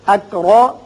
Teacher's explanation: را کے اوپر زبر ہے اس کو پر پڑھیں گے